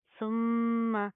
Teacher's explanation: میم کے اوپر شد آ رہی ہے، غنہ کریں گے، نا کے اندر ساؤنڈ پیدا کریں گے